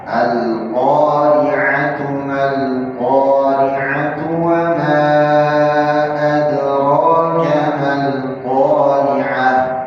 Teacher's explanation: Tak marbuqah yang tatkala wasal dibaca tak, tatkala dia sukun atau waqaf, ya, di menjadi huruf H. Ya, Al-Qari'ah sukun, waqaf berhenti jadi H. Tapi kalau dia wasal disambung menjadi tak.